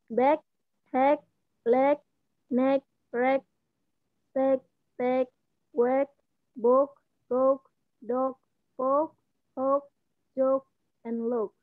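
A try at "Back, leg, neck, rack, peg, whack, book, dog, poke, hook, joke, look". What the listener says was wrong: Okay, look. Good.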